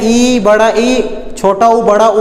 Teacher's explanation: ऐसा स्वर वर्ण जिनके उच्चारण में हमारा मुंह लगभग बंद रहता है, क्या कहलाता है? समृत स्वर वर्ण कहलाता है।